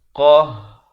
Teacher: bila di akhir ra-nya jadi tebal. Qahhar, jangan baca nipis.